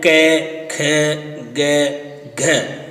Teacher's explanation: तो उच्चारण स्थान कंठ, इसका नाम है कंठ्य